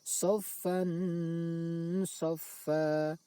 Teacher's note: Cara membacanya, suara tanwin dibaca samar antara idhar dan idgham lalu didengungkan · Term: ikhfa